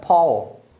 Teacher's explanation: a pessoa acaba lendo ao mas na verdade a pronúncia é o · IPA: /ɔ/